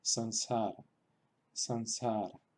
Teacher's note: Realmente, dicho así, no suena gran diferencia que si incluyéramos una N detrás de la vocal. Pero si queremos ser, digamos, respetuoso con la pronunciación teórica del sánscrito, sería una nasalización de la A.